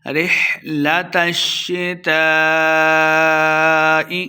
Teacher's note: تا کو شین کے ساتھ ملائیں گے، شین مشدد ہو رہا ہے، تا زبر شین تش، تا کے ساتھ الف مدہ ہے، اس کے اوپر مد ہے، ہم نے اس کو لمبا کرنا ہے۔